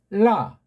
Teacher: 혀 끝을 입천장에 붙였다 떨어질 때 내는 라